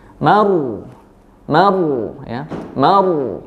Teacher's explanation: ro-nya dibaca tebal atau tafkhim